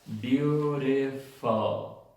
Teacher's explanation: La palabra beautiful, también tenemos una schwa en la última sílaba, la U. Beautiful.